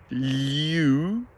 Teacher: we have a slight changing vowel. U, going into a round sound.